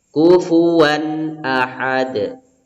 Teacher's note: ini dibaca jelas ya nama hukum tajwidnya yaitu izhar halqi jadi cara bacanya tidak boleh didengungkan tidak boleh ditahan terlalu lama